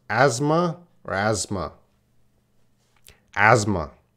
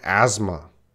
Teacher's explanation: the S is not silent. The TH is silent.